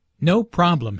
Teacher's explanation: The receptionist laughs first, then puts emphasis on “No” by lengthening the word.